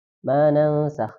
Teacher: ada nun sukun ketemu sin, bacaan ikhfa, disamarkan nunnya, jangan lupa didengungkan